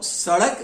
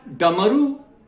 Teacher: सड़क में ड़ ध्वनि है, असल में ड़ में कुछ जीभ एक पलटी मारती है, कह लीजिए, एक बार उलटती है, और ड में हम सीधा बोल रहे हैं